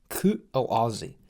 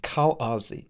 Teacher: air is stopped from leaving the throat midstream using the glottis. The glottis is essentially the furthest down you can go in your vocal tract, almost where it ends and your lungs begin. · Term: glottal stop